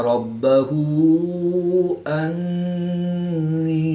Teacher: الف مدہ کے بعد حمزہ دوسرے کلمے میں ہے تو یہاں پر مد منفصل ہوگی، 2 سے 3 الف تک کھینچ کر پڑھیں گے.